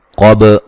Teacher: قاف کو موٹا ادا کریں گے، با پہ قلقلہ کریں گے